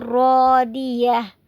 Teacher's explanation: جو گول تا ہے اس کو ہا میں بدل دیں گے، تا کو ہا میں بدل کر ساکن کر دیں گے اس کو